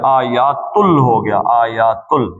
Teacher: آیاتن تھا تو یہ لام میں آگے چلا گیا، آیاتل ہو گیا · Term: یرملون کا قاعدہ